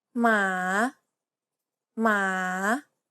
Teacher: It has a rising intonation and kind of sounds like you're asking a question. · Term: rising tone